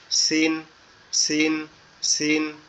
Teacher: তাহলে সিন হবে সিন হচ্ছে জিহ্বার আগা জি সিন সিন দুইটা নিচের, অক্ষর জি জিহ্বার আগা নিচের দুই দাঁতের আগার সঙ্গে লাগবে, লেগে উচ্চারিত হবে